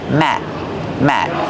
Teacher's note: the word matte is a stop tee we don't say matte we stop the air we don't release the sound · The letter T at the end of the word mat is a stop T.